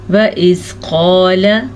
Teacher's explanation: قاف کو پر پڑھیں گے، قاف حروف مستعلیہ میں سے بھی ہے